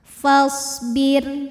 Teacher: Shad punya sifat yang tidak memiliki lawan namanya shofir artinya berdesis seperti Suara angsa